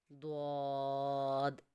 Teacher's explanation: ٹھیک ہے، زبان کی کروٹ جب بائیں طرف والے اوپر کی داڑھوں کے ساتھ لگے گا تو دعات کا مخرج ادا ہوگا، لیکن بچوں آپ لوگوں نے یاد کرنا ہے زبان کی کروٹ داڑھوں کے ساتھ لگنے سے دعاد